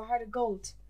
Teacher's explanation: because of the Dublin accent, he's got a heart of gold, but it has a nearly t sound at the end, so a heart of gold.